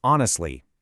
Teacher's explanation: That H is completely silent. If you pronounce it, you'll instantly sound unnatural.